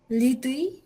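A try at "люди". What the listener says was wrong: Lekin lidiy demdik, nima deb o'qiymiz? Birinchi harf l harfi ekan, ikkinchisi u harfi ekan, d ekan. Liu. Lyudi degan odamlar.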